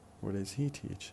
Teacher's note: strong, weak, weak, strong stress pattern, because where is strong, does, weak, auxiliary, he, pronoun, weak, and then teach is a verb, should be strong.